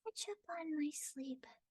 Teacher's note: Very airy, flat mouth, tiny mouth.